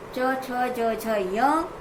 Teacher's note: तो इनको हम तालु से बोलते हैं, तालु की सहायता से बोलते हैं